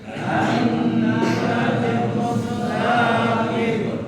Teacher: Karena ada nun bertasydid, maka wajib gunnah jadi ditahan